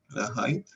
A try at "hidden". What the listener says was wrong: Hidden. Ahí, si no me equivoco, si me equivoco me pueden corregir, pero creo que en inglés cuando hay dos, o sea, hide, pues es hide, ¿cierto? Se pronuncia hide, pero cuando hay dos consonantes, como en hidden, ahí el sonido de la I cambia. Se pronuncia como, no hide, sino hidden.